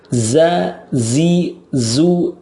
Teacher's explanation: Za itu ada sofir plus rakwah jadi mengalir suaranya